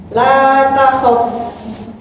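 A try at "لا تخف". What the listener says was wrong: Itu bertasydid sekarang. Coba lagi.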